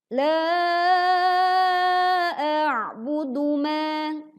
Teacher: Maka pastikan huruf pertama dibaca hamzah, yang kedua huruf ain. Jadi saat membaca dan menekan huruf ain dalam kondisi sukun, pita suara kita menyempit sehingga suara terdengar lebih berat